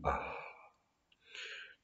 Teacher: c'est de l'air qui sort, qui jaillit, indifférencié du fond de la gorge. Ah, c'est un son guttural.